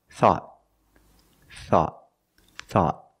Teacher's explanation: at the end the tongue goes up and makes a stop T not thought but thought thought I thought you were going to